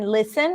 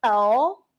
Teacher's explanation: for the light el there is clear contact between the tip of the tongue and the upper pallet